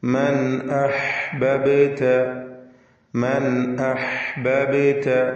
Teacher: മൻ എന്നതിലെ സാക്കിനത്ത നൂൻ ഇൽഹാർ ഹൽഖി നൽകി മണിക്കാതെ വെളിവാക്കണം. ശേഷം ഹംസയാണ് വന്നിട്ടുള്ളത്.